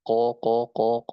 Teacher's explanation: huruf qof aqsal lisani fauq ini berada di aqsal lisan artinya pangkal lidah fauqo yang ada dalam langit-langit bagian dalam